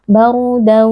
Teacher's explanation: Ketika ada tanwin atau nun sukun yang bertemu dengan waw, maka bunyi nun sukun atau tanwinnya kita idghamkan atau kita masukkan ke dalam bunyi huruf waw dengan menyisakan sifat gunnahnya. Baru daw wala dengan gunnah yang dipanjangkan. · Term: idgham bi gunnah